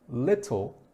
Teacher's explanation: little has the T sound changed into a d so that you can say that a little bit smoother